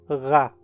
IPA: ɣa